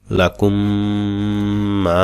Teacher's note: এখানে মিম সেকেনের পরে মিম থাকার কারণে এটা এদগাম। মিম সেকেনের এদগাম। এখানে গুণনা করতে হবে।